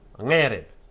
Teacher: The unaccented closed syllable reb has a short vowel because it has no accent and it's closed.